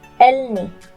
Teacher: A ㄹ that is used as a final consonant, and then followed by another consonant should be pronounced as an /L/.